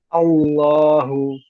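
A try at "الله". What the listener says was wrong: Masih tebal, Allah, coba pastikan dulu, A.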